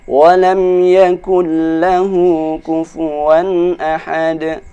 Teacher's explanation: karena bertemu dengan huruf lam, maka tidak dibaca dengung, dia dibaca dengan cepat.